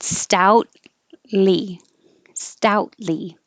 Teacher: hold the tea because you don't need to release it stout lee stoutly even if the word was just stout you · Hold the T at the end. Stoutly, hold the T because you don't need to release it.